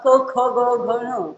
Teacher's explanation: किंवा क ख ग घण हे जे व्यंजन आहेत या वर्गातली त्यांचा उच्चार करताना त्यांना कंठव्य अस म्हणतात म्हणजे आपल्या गळ्यामधन कंठामधून आपण त्याचा उच्चार करतो